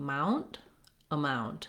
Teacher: in the word amount, we have second syllable stress